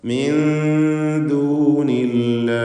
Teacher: നൂനിനെ അവ്യക്തമാക്കി മണിക്കുക. ഇഖ്ഫാ ഹഖീഖി.